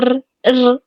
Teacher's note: اور را کو ادا کرتے وقت تھوڑی سی رگڑ سی بھی پیدا ہوتی ہے، آواز آتی ہے ر ر اس طرح سے کر کے.